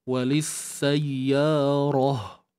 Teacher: matikan ta ni dengan bunyi huruf ha. Bukan ha pedas ni, ha biasa, pangkal kerongkong ni